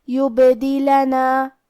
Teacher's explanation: کلمت یبدلنا میں با پہ جزم ہے تو ہمیں با کو قلقلہ سے پڑھنا ہے اور قلقلہ کا معنی ہے حرف ساکن کو ہلانا، تو ہم با کو ہلاتے ہوئے یہ کلمہ کو پڑھیں گے.